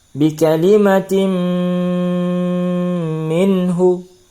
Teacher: Tanwin dimasukkan ke dalam huruf mim disertai dengung 2 harakat. Bi kalimatin minhu, ya, ditahan selama 2 harakat ketika kita membaca tim. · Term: idgham bi gunnah